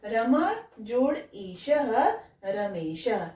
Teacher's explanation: तो आ और ई दोनों मिलकर ए हो जाएगा। रमा जोड़ ईश रमेश, ए में परिवर्तित हो गया ये ई। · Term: गुण